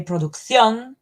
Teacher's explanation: in Spanish we say producción, putting the stress in the last syllable